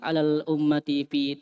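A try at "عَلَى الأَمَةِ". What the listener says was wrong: Alal amati. Bukan ummah, ama. Abdi itu budak laki-laki. Budak perempuan ama.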